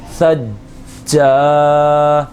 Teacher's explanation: جیم الف زبر جا، الف مدہ بھی ہو رہا ہے، الف سے پہلے زبر ہے، جمع کے ساتھ قلقلہ بھی کریں گے، ایک الف کے برابر کھینچ کر بھی پڑھیں گے